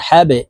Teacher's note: এই হা জজমওয়ালা বা কে ধরবে হা বা জবর হাবে এখানে কলকলার হরফ বা থাকার কারণে এই বাকে নিচের দিকে ধাবিত করে ধাক্কা দিয়ে উচ্চারণ করতে হবে